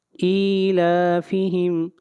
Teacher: حمزہ کے نیچے کھڑی زیر ہے، اس کو 1 الف کے برابر لمبا کریں گے، اور لام کے اوپر کھڑی زبر ہے، اس کو بھی 1 الف کے برابر لمبا کر کے پڑھیں گے.